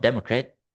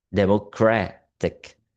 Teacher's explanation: The suffix ik shifts stress from the first syllable to the syllable before the suffix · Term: stress shifting suffixes